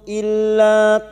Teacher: Illa lam alif dua harakat kita panjangkan